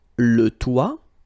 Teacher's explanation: remember final T not pronounced